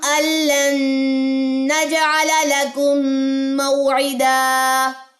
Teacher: نون ساکن کے بعد نون آ جائے تو ادغام مع الغنہ